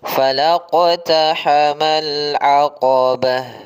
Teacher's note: Pada bacaan falaqtahamal aqabah, maka perhatikan dalam bacaan qaf yang dia sukun. Maka ketika huruf qaf sukun ini harus kita pantulkan.